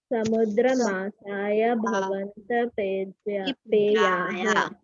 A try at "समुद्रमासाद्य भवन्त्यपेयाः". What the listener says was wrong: मासाय नहीं, मासाद्य। द है, द plus य है, द प्लस य इक्वल टू द्य।